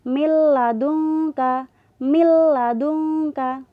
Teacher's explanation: Jadi nun sukunnya ini seakan-akan hilang, langsung masuk di huruf lam. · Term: idgham bila gunnah